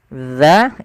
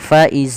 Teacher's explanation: ya jangan sampai Faiz tidak dia Bagaimana melafalkan huruf dalal yaitu ujung lidah kita menempel dengan Gigi di atas